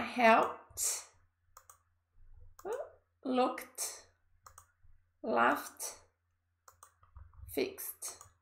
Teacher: quando a gente vem pro T, é quando a gente faz o contrário, quando não vibra as cordas vocais